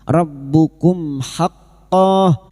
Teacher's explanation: Rbukum mim sukun bertemu ha. Mim sukun dibaca jelas tanpa mendengung idhar syafawi.